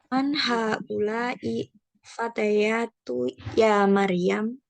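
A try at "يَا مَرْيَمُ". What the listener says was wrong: Ya Maryamu, mu-nya dibaca.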